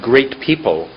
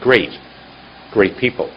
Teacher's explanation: in American we have very short soft T's at the end of words